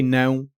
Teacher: air needs to escape through your nose while you're saying the vowel, not just through your mouth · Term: nasal sounds